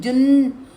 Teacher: آپ کی زبان ٹپ آف دی ٹنگ جا کے آپ کے گمز پہ اوپر نہیں لگے گی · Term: اخفا